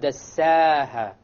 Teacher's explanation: the alif here is light because the seen is not of the heavy letters.